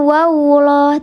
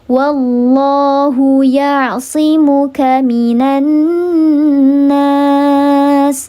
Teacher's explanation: Bukan wawuloh, tapi wallah. Wallah, diangkat pangkal lidah atau lidah bagian belakang itu diangkat, dikeraskan sehingga menghasilkan bunyi yang tafkhim atau bunyi yang tebal